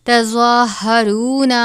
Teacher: منکم من دیارہم تظاہرون زوا کو بھی پر پڑھا جاتا ہے. زوا کے اوپر کھڑا زبر ہے، اس کی مقدار 1 الف کے برابر ہوتی ہے